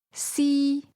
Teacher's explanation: First tone, high level